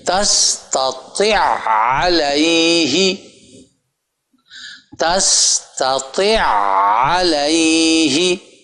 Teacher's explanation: اور یہ اب دونوں عین آگے آ گئے تو طا کو آگے علیہ کی جو عین ہے اس کے ساتھ ملائیں گے. تستطيع علیہ، وہ بظاہر ایسا لگتا ہے کہ پہلے کو پڑھا جا رہا ہے، پڑھا نہیں جا رہا، وہ چونکہ مشدد ہے اس کے اوپر جا کے آواز ٹکتی ہے.